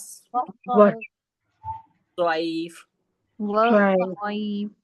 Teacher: जबान की नोक जब नीचे के दांतों की जड़ से लगती है तो सीन और स्वाद अदा होता है।